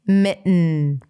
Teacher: you bring the tongue up for the T, you keep it there, and then you release air through the nose